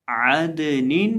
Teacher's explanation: اب یہ جو عین ہے اس کو ہم حلق کے وسط سے ادا کریں گے، اور دال کو ہلا کر پڑھیں گے، یہ حروف قلقلہ میں سے ہے